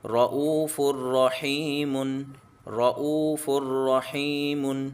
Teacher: حمزہ کو کھینچیں گے واو مدہ ہے، ہا کو کھینچیں گے یا مدہ ہے. تنوین کے بعد را حرف المنون میں سے ہے کہ اس کو غنہ نہیں کریں گے.